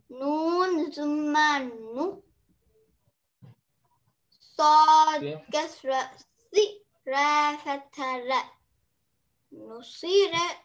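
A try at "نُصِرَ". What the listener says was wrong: Very good, mashallah.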